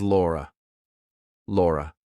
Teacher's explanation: It ends on a schwah.